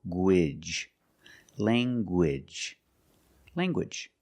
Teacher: You have the nasal sound, lang, and the hard g.